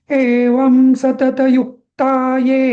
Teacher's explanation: आता अनुस्वार असल्यामुळे व जरी लघू असलं तरी त्याच्या अनुस्वार आल्यामुळे ते गुरु झालाय